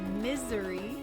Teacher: putting emphasis on the i or the beginning of the word